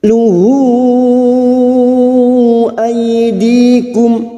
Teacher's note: ay fathah bertemu ya sukun kita lunakkan